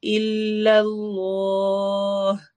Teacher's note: اسم جلالہ کے لام یعنی اللہ کا لام کو ہم موٹا کر کے پڑھیں گے